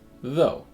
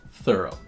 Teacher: in though the th is voiced so it causes buzzing between the teeth the in thorough the th is voiceless which means that the tongue is still between the teeth but